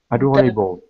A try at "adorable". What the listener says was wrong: Adorable. Adorable. I think the biggest problem that you're still having is those R sounds, which is really tricky from French. Even when they're in the middle or at the beginning of a word, you're kind of caught between the French R and the English R.